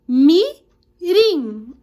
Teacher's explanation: é por ser a última lá ela é uma oxi tona é a última sílaba tônica mais forte